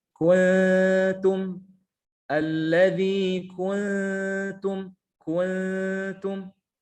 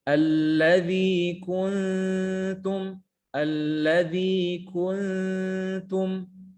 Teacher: kenapa Karena di sini ada demung sedangkan dengung keluar dari al-khaisyum yang benar adalah masukkan sebagian kehidung sebagian lagi ke mulut